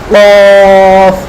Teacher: জিহ্বার গোড়া উপরের তালুর সাথে মোটা করে অ সাউন্ডে বলতে হবে কফ